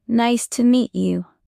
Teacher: Voice rises at the end. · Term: Friendly tone